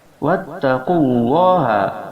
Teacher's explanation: huruf ta, makharijul hurufnya berada pada ujung lisan yang disentuhkan pada pangkal gigi seri bagian atas.